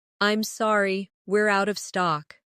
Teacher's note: Stress, out of stock to make it clear.